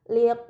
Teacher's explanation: Ini dinamakan mad muttasil, maka harus dibaca panjang selama 4 atau 5 harokat